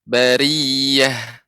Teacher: Kemudian untuk huruf ra bari, nah ini baru tipis. Ketika ra berharokat kasrah, maka tipis.